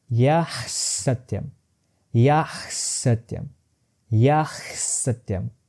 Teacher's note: I begin with Visarga as a voiceless glottal fricative, but I end up dentalizing it and transforming it into a sibilant half sa.